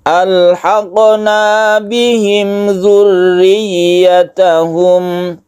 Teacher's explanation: alhaqna kita qalqalahkan karena ada di tengah, disebut qalqalah sugro. Kalau di akhir kalimat atau ketika waqaf itu qalqalah kubro.